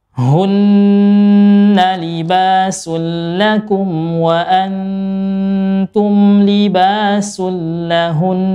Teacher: Jadi yang dipanjangin, ya, yang digunnahkan itu nunnya. Yang dipanjangin adalah gunnah nunnya, bukan haknya. Karena haknya nggak ada tanda panjang.